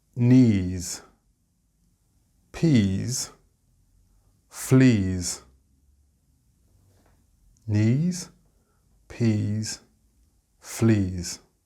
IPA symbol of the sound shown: z